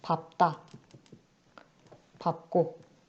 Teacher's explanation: 밥이라는 어간이 뒤에 디귿으로 시작하는 자음을 만났을 때 리을이 아니라 밝다가 아니라 밥다 라고 비읍을 살려서 발음한다. 리을 비읍이 비읍으로 자음군 단순화 됐다.